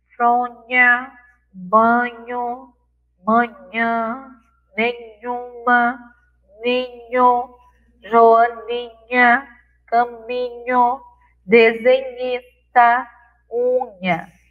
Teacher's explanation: as sílabas nhá, nhé, ni, nhó, nhô, elas têm marcas da nasalidade